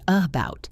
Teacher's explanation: The schwa is a very short, weak sound that sounds like a soft uh. It usually happens in unstressed syllables of words.